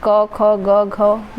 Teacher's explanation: एक कंठव्य व्यंजन होता है जो कि क, ख, ग, घ ये सारे ह तक आते हैं।